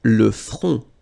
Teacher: Le front. Final T not pronounced. Le front. Okay, remember this nasal on, on.